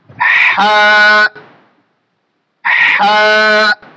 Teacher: আমরা উচ্চারণের সময় খেয়াল করব এটা হামসার হরফ এবং আমাদের বাতাসটা জারি থাকবে। হা হা, আমরা বেশি হা করে দেব না।